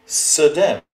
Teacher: is pronounced with the latent shva between the s and the d